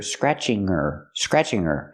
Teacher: her is not a stressed word. So, we don't pronounce the h. You hear scratching her.